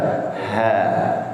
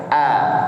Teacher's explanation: Sedangkan ha itu lebih melebar. Ha. Karena ada aliran udara yang keluar. Ya, kalau a itu kan tertahan, seperti tertahan. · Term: huruf ha